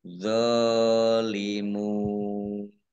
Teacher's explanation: Mim sukun bertemu dengan huruf dha, bacaan izhar safawi, dibaca jelas. Dha fathah berdiri, mat tobi'i, panjang 2 harokat. Mim domah, wawu sukun, mat tobi'i, tetapi karena di akhir kalimah atau karena bertemu dengan huruf terakhir yang dibaca sukun karena wakof, maka menjadi mat arid lis sukun.